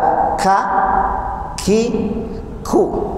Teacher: Kalau ka, al-hamsu, al-hamas, keluarnya angin atau udara.